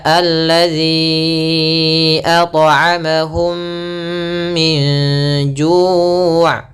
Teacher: bunyi mim masuk ke bunyi kedua dan mim ditahan, ditahan ahum selama dua harakat atau sedikit lebih dari dua harakat, yaitu m. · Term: idgham